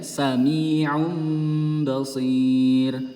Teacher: Domah tanwin bertemu dengan ba. Kemudian domah tanwinnya ini melebur menjadi huruf mim.